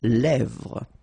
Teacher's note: Final S not pronounced.